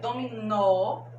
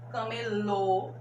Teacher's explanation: dominó com o som aberto, camelô com o som fechado